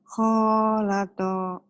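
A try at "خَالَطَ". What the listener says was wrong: Kho-nya dong yang panjang.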